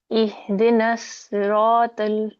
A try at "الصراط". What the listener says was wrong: اب صراط تک تو ٹھیک ہے, پا آپ کا کافی کمزور ہے, اٹ ساؤنڈز لائک آپ تا پڑھ رہے ہیں. میک اٹ پا.